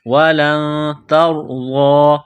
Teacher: نون ساکن کے بعد تا ہے حروف اخفا ہے تو آواز ناک میں چھپائیں گے غنہ کریں گے اس ناک میں آواز چھپانے کو اخفا کہتے ہیں وَلَن تَرْضَى